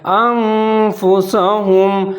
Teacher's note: آگے آ رہا ہے نون تو آپ نے اس کو ناک میں پڑھنا ہے